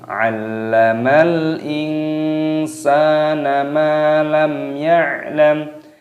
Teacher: Di sini tadi lamnya berharokat tasdid, ini dimasukkan dan dimatikan lamnya